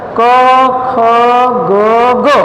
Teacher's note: દાખલા તરીકે કંઠ્ય વ્યંજન, કંઠ એટલે ગળું, કે જ્યારે ફેફસામાંથી બહાર હવા આવે છે, નાદ તંતુઓના ધ્રુજારા સાથે જ્યારે ગળામાંથી બહાર નીકળતી હોય છે ત્યારે કંઠ આગળ અવરોધાય છે. તમે ઉચ્ચાર કરશો ક ખ ગ ગ અને તમે અહીંયા આંગળી રાખશો તો તમને અહીંયા ધ્રુજારી વધારે જોવા મળશે.